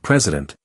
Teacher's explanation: Notice how the middle syllable doesn't stand out. It's not prei, but rather president where the central vowel becomes relaxed.